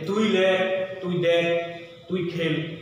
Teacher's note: তুচ্ছার্থ মধ্যম পুরুষের বেলায় কিন্তু হ্যাঁ এ ধ্বনি বিবৃত হয় অর্থাৎ এ উচ্চারণ করতে হয়।